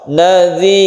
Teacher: karena dia itu bersukun dan sebelumnya itu adalah ada huruf yang berkasrah, maka roknya ini menjadi tipis atau tarqiq. Jadi kita membacanya, bibir kita itu dikebawahkan ketika membaca sukun ro.